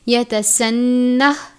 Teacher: ہا ساکن ہے اس لیے ہا پر آواز کو روک دیں گے یعنی رک جائیں گے، یتسنہ اس طرح سے ادا کریں گے۔